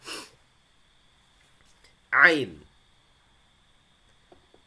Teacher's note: huruf ain tidak ada khayshumnya. Jadi ain. Ain, ya. Ketika hidung kita tutup atau dibuka, suaranya terdengar sama.